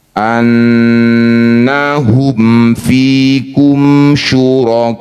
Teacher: Nun mim bertasydid disebut bacaan gunah musyaddadah. Bunyi nun dengungkan dulu dua harakat.